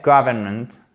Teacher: il y a le N qui se glisse et en fait, on a un enchaînement qui est assez peu naturel du N puis le M en anglais